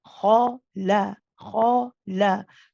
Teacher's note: The kha is a heavy letter. We know, we've discussed the makhraj of this coming from the top of the throat. It is followed by a light la. So be careful not to say khala, the la. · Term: heavy to light